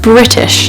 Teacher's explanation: you do pronounce the R sound because there's an I sound right after it, a vowel sound.